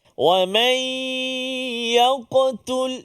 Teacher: qalqalah pada huruf qaf kena jaga walaupun dia berada di tengah kalimah, kan, qalqalah yang kecil, sughra, tapi dia tetap melantun. Jangan kita sembunyikan dia.